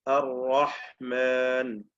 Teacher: തഫ്ഖീം ചെയ്യപ്പെടുന്ന റാ ഉച്ചരിക്കുമ്പോൾ നാവിന്റെ പിൻവശം ഉയരുന്നു